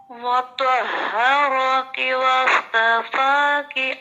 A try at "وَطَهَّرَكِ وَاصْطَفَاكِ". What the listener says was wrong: میں آپ کو ریکمینڈ کرتی ہوں کہ حروف مستعلیہ کی پریکٹس دوبارہ کریں. آپ کا پا جو ہے وہ ہیوی نہیں ہے، ٹھیک ہے. آپ دوبارہ پڑھیں.